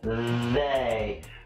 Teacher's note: the th sound with a vibration in your throat like vague if you put your hand to your throat you should feel it vibrate and your tongue is out of your mouth